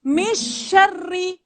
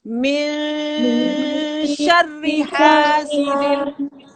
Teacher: Dia nak jelas tapi dia kena dengung. Dia duduk tengah-tengah. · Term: ikhfa'